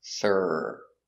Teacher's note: It's tense in the back, and the tip of the tongue is not touching anything.